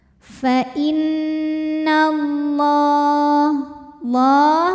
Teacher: Maka alif lam ini tidak kita baca atau disebut dengan idgham syamsi